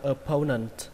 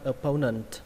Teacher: Lên giọng âm thứ hai, opponent.